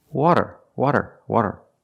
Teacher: it's different it's not a rolled R it's a flat t or a fast D